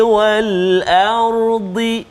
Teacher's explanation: huruf ra yang sukun ataupun mati, sebelum dia hamzah tu baris atas, maka ra dia kena tebal. Ra dia kena tebal. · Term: ra yang dibaca tebal